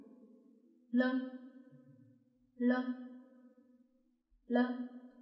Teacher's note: 是不是有一个舌头和下齿龈触碰的声音呢